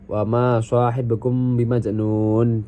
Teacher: majnun di sini dihukumi matobi'i karena huruf wawunya dibaca panjang 2 harokat